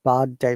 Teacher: because it's a British IPA. R is silent, but in American IPA, R should be the birthday.